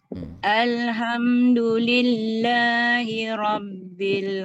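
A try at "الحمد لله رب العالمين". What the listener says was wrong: Alamin. Masih kurang tepat lagi baris kasrahnya. Bil alamin.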